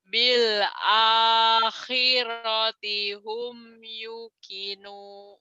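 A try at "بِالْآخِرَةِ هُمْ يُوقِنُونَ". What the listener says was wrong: Yu-nya panjang. Bil bil akhirati hum yuqinun.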